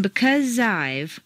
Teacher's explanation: the Z sound at the end of because and the I sound of I blend together smoothly